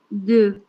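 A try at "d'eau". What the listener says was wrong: Do. Recuerden, esa E, A, U se pronuncia O. Do.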